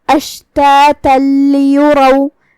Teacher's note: یہاں حکم ہے ادغام بغیر غنہ، تو ہم یہ تنوین کو لام میں داخل کر کے تشدید کے ساتھ لیکن بغیر غنہ کی حکم کو ادا کریں گے